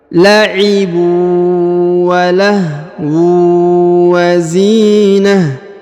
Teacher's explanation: Maka teorinya ta marbutah berubah menjadi ha sukun ya. Apabila bacaan berhenti, maka ta marbutah yang ini berubah menjadi ha ya. Jadi taknya tidak dibaca lagi.